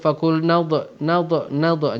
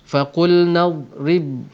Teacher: Dad bukan huruf syiddah, jadi dia tidak akan pergi pada sifat qalqalah, jadi bacakan dia dengan sifat yang steady